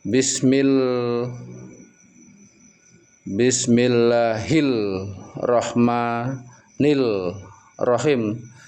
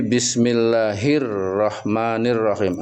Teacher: alif lamnya hilang terang huruf ronya maka seperti matahari jelas terang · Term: alif lam syamsiyah, alif lam samsiah